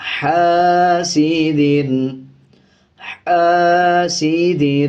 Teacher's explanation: اس دال پہ غنہ نہیں کیا جائے گا بلکہ جلدی سے ادا کیا جائے گا، حاسد، حاسد، ہا کو باریک پڑھا جائے گا۔